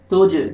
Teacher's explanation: جیم حروف قلقلہ میں سے ڈبل ساؤنڈ آئے گا